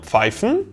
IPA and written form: ˈp͡faɪ̯.fən (pfeifen)